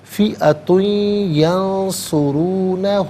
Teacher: فئۃ میں تا پر دو پیش کی تنوین ہے، اسے ینصرون میں یا کے ساتھ ملائیں گے، یا کی آواز کو غنّے کے ساتھ ادا کریں گے. یہاں پر بھی یرملون کا قاعدہ اپلائی ہوگا.